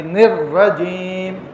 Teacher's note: شیطان نر رجیم, نون کو را کے اندر داخل کر کے پھر پڑھیں گے